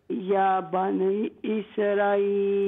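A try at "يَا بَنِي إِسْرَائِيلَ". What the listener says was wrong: نہیں، اسرا مد واجب متصل، را کو لمبا کریں.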